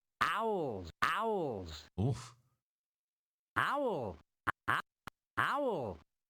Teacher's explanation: There's a lot of vocal fry on owls.